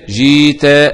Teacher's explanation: الإبدال، قوله تعالى جئت، قرأ السوسي أبو جعفر بالإبدال جيت